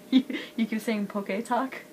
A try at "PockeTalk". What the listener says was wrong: It's PockeTalk. There's no extra T. PockeTalk. PockeTalk.